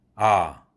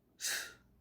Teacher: 당연히 아가 유성음이니까 더 크게 들리고, 스, 이것은 무성음이니까 진동이 없기 때문에 바이브레이션이 없어서 아주 약하게 들린다는 얘기죠